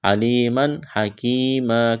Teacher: تنوین کے بعد ہا ہے، حروف حلقی ہے، یہاں پر غنہ نہیں کریں گے، آواز ناک میں نہیں چھپائیں گے، اظہار کریں گے